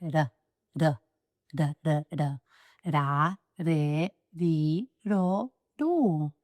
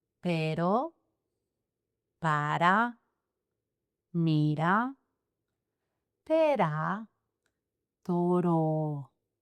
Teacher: Single R sound, it's just a tiny tap of your tongue